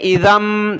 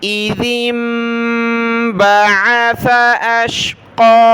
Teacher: یہاں پر دیکھیں یہ ذال پر زیر ہے، ذال کو ملانا ہے چھوٹی میم کے ساتھ ، بہت سارے اس پر زبر پڑھ لیتے ہیں نادانی میں،